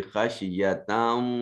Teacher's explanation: خشیہ اگر وقف کریں گے تو خشیہ پڑھا جائے گا، وصل کریں گے تو ادغام ہوگا کیونکہ تا کے اوپر تنوین ہے، اور اس کے بعد واو جو ہے یہ حرف یرملون میں سے واو آ گیا، لہذا اس نون تنوین کو جب واو سے ملائیں گے تو ادغام ہوگا، اور ادغام بھی بالغنہ ہوگا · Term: ادغام بالغنہ